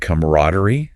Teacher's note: camaraderie, stress on the rad is probably more common, especially in American English